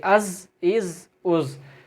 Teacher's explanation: یہ حرف صفیریہ کا لفظ ہے، یہاں پر سیٹی کی آواز نکلے گی